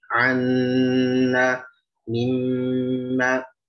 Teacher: dari sisi gunahnya terlihat jelas ya, dan juga ada 2 harokat